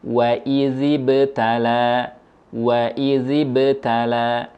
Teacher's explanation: huruf ba ketika didahului huruf berharakat kasrah suara pantulannya dan bentuk rahang kita tetap diam pada huruf ba